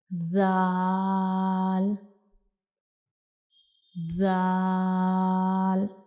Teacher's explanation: सीटी वाली आवाज़ जो है वो नहीं आनी चाहिए जब हम ज़ाल को अदा करते हैं, क्योंकि ये एक नरम हरूफ है, हम इसको नरमी से अदा करते हैं।